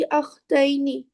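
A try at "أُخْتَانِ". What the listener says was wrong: या नून नहीं रहेगा, अलिफ नून रहेगा, ली उख्तान है। आप सिस्टर के लिए अख्त का वर्ड यूज कर रही हैं, अलिफ पे उस हमजा पे जबर नहीं रहता है।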